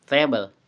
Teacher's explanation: voiceless, alveolar, and plosive, made by touching the tongue to the alveolar ridge and releasing air without vocal cord vibration.